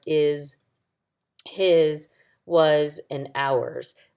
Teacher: So when sight words end with an S, they make the Z sound.